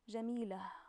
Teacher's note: You can hear I pronounce the ta marbuta as an ha. It has an ha sound.